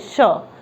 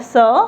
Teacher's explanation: जिसको हम तालू में टच करके एयर को बोलते हैं श, ये दांते से होता है स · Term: तालब्य श